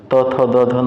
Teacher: त, थ, द, ध आपका दंत से होगा